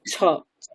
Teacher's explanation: ছকারটা মহাপ্রাণ বর্ণ, মহাপ্রাণ মানে ওটাকে একটু জোরে উচ্চারণ করতে হয়